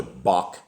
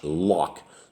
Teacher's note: The H and the K are pronounced as the ch in the German composer Bach or in the Scottish lock, like a guttural, aspirated H sound.